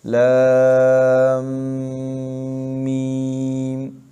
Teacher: جیسے الف لام میم میں لام کو جب میم کے ساتھ پڑھتے ہیں تو اس کے اخیر میں تشدید پیدا ہوتی ہے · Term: مد حرفی مثقل